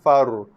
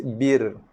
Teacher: Ra ni tebal sebab ra mati sebelumnya ada hamzah wasal ataupun alif topi Far, ni bir nipis Perhatikan perbezaan. Bunyi yang keluar adalah berbeza kerana sifat yang berbeza. Ra tebal far, ra nipis bir.